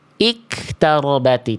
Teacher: Jadi bukan hanya "iktarati," kesalahan pada sukun qof adalah dibaca dengan hembusan napas atau diubah sepenuhnya menjadi kaf